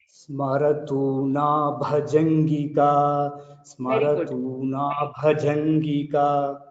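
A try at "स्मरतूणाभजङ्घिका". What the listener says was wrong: Bhajanthika, only that Gha you have to little observe, otherwise it is good.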